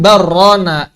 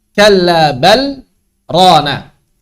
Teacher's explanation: kalau bertemu dengan lam dan ra maka wajib dibaca idgham selain saktah pada mutaffifin. Pokoknya selain saktah semuanya idgham.